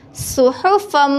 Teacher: اللہ کے لام سے پہلے زبر یا پیش ہو تو اللہ کے لام کو پر پڑھتے ہیں، رسول من اللہ، صاد پیش سو، ہا پیش ہو، سحو، فا دو زبر میم، فم، صحفم، یہاں میم شدت ہے، میم شدت کے اوپر ہم غنہ کریں گے اور غننے کی صورت میں دونوں ہونٹوں کو تھوڑی دیر کے لیے بند رکھیں گے۔